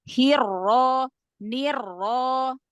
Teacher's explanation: Karena roknya fathah jadi langsung tafkhim ya.